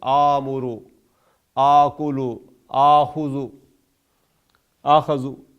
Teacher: التقاء الحمزتین اگر کہیں فعل میں ہوگا تو وہ ا اور سکون والا الف جو ہے یہ دونوں ملیں گے تو آ کی آواز دیں گے